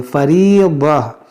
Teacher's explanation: अब यहाँ पर हमारी सांस टूट गई, तो यहाँ पर वक्फ है, यहाँ पर हमें इयादा करने की ज़रूरत नहीं है। जब रुकेंगे हम तो इस गोलता को हा साकिना से बदल देंगे, फरीज़ा, चाहे इस पर दो ज़बर ही क्यों ना हो।